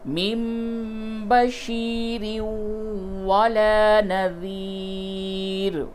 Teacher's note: تنوین کے بعد واو ہے، ادغام مع الغنہ ہوگا